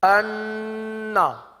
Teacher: ایک گنہ ہوتا ہے مشدد گنہ جو سخت ناک کے سخت حصے سے ادا ہوتا ہے